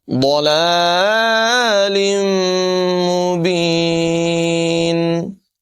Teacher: تنوین کے بعد میم ہے، یہاں پر بھی غنہ کر کے پڑھیں گے، ادغام ہوگا